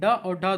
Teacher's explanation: ड और ढ दोस्तों ये उच्चारण स्थान के आधार पर मुर्धन्य व्यंजन है